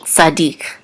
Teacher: the tavir which is the trout Mark and the accent mark so we know that the accent is on the last syllable